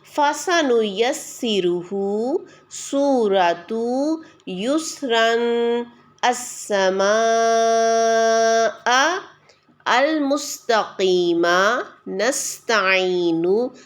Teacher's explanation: سین بھی ہلکا اور باریک پڑھا جانے والا حرف ہے